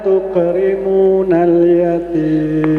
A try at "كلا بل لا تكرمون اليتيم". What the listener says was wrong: Mohon maaf ya, masih mantul. Tukrimunal yatim. Hamasnya dimantulkan. Kalla balla yatim.